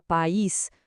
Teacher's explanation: A palavra vira país com duas sílabas. O acento força a separação criando um iato. · O acento força a separação, criando um hiato. Um simples acento muda toda a estrutura da palavra.